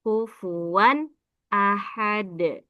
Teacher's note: Ini izhar halqi. Wan, fatatain bertemu hamzah. Dibaca jelas izhar halqi.